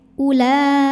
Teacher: walaupun berdiri setelah Hamzah yang berharakat damah ini tidak dibaca panjang e u-nya tetap pendek ya Ula ini bukan wau Mad bukan